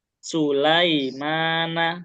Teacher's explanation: ujung lidah atau lidah bagian ujung bertemu gusi lam ya